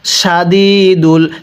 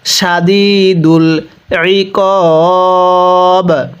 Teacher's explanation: শিনটা মোটা করে, অনেকে সাদিদুল পড়ি, শিনটা যদি চিকন করে পড়ি তাহলে পড়াটা সহি শুদ্ধ হবে না